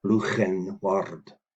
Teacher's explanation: I'll take the dictionary's view that it must be the fricative G